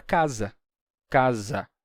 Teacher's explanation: em espanhol o s entre vogais tinha som de z como em português